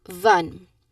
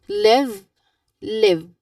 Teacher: feel the buzz in your lips and especially in your throat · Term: V sound